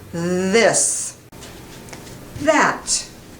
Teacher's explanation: The voice begins immediately. You begin the voice and push out the sound. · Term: voiced TH